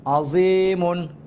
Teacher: হরকতের উচ্চারণ তাড়াতাড়ি, আইনটা গলার ভিতর থেকে হবে।